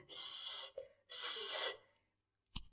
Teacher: یاد رکھیے گا، اگر ہم سیٹی بجائیں تو سیم جو سیٹی والا سٹائل ہے وہی سٹائل ہمارا سین پڑھنے کا ہے۔ زبان کی نوک اوپر نیچے کے سامنے والے دانتوں کے درمیان آئے گی۔ یاد رکھیے گا، ٹچ نہیں کرنا، زبان کی نوک نے اوپر نیچے کے دانتوں کو ٹچ نہیں کرنا، بلکہ جسٹ درمیان میں آ جائے گی، سین، سین۔